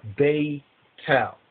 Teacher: But in the Ethiopic, we don't have a th, we don't have a th sound such as that. So we just have it as a ta.